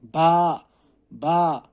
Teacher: हम ये जो होंठों के गीले वाले हिस्से होते हैं, इनको मिलाने से बा अदा होता है। और यहाँ अगर हम देखेंगे, बा अलिफ ज़बर बा 2 हुर्फ़ों के साथ बना होता है।